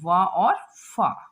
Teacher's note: इन वर्णों के उच्चारण में ऊपर के दांत, ठीक है, ऊपर के दांत तथा नीचे के होंठ का प्रयोग किया जाता है, ठीक है। तो ये वर्ण कौन कौन है, व और फ। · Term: दंतोष्ठ